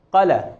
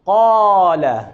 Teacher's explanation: مثال کے طور پر اگر کوئی مد نہ کرے، کھینچے نہیں، قل، قل، تو اس کا مطلب ہے اس نے الف کو چھوڑ دیا ہے، نہیں پڑھا الف کو، قل۔ مد نہ کرنے سے یہ حرف ساقط ہو گیا ہے